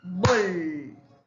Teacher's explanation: Tiene el acento en la penúltima.